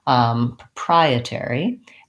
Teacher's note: I still have second syllable stress. I still have the unstressed first syllable.